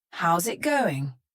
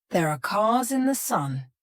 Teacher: In each of these words, the S becomes a Z sound. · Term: linking the S plus a vowel